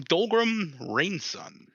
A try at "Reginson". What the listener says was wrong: Reginson. There's a G in there.